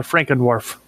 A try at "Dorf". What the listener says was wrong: No, not dwarf, Dorf. D-O-R-F. Like literally D-O-R-F. Not D-W-A. Dorf.